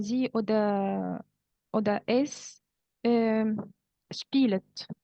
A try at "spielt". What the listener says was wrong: Spielt. There is no E between L and T.